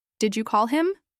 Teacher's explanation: Rising intonation here shows interest. You want to know if the action happened.